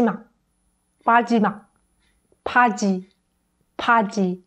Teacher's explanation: P is an aspirated sound so clearly there is more air coming out